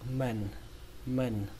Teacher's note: Cách đọc thứ hai của từ này, các bạn có thể đọc âm a bẹt